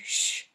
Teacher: when you say shh your tongue almost touches the top of your mouth then the air comes out gently your lips are a little bit rounded and the sound is voiceless